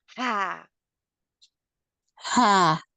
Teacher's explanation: We use middle part of your halq or throat to say ha